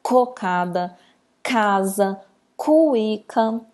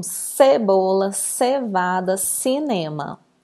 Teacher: Que nesse primeiro conjunto, a letra C ela está com o som vindo da garganta. É um k.